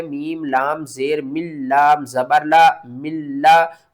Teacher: غنہ نہیں کریں گے، ادغام تو کریں گے لیکن غنے کے بغیر کریں گے